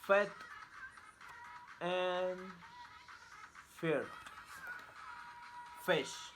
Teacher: Place of articulation, labiodental. Manner of articulation, fricative. Voicing, voiceless.